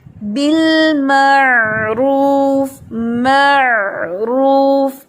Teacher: آواز ایسے سمجھ لیں کہ حلق میں جاتی ہے لیکن جھٹکے سے واپس نہیں آتی